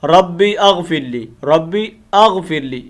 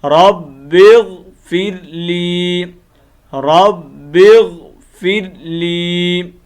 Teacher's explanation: با کو اس غین کے ساتھ کنیکٹ کرنا ہے ہم نے · یہ حمزہ وصلی ہے، اس کو ہم نے گرا دینا ہے